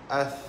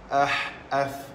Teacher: Hamas ni maknanya terlepas, terlepas apa? Terlepas nafas.